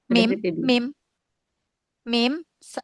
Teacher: makhraj muhaqq mim ya itu dari bibir dari kedua bibir yang dirapatkan. Makhraj muqadarnya alkhaisyum.